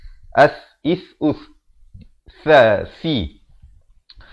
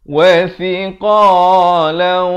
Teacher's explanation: Kalau boleh saya tunjukkan teman-teman dirahmati Allah, huruf tha, hujung lidah ini keluarkan di antara 2 gigi ini menyentuh 2 gigi di atas ini